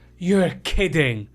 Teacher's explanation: you'll often hear people stress the word kidding to make the reaction stronger